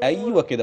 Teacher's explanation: أبين ضمة العين والتاء